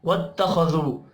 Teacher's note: خا حروف مستعلیہ ہے، پر پڑھا جائے گا ، واو مدہ کو ایک الف کے برابر کھینچ کر پڑھیں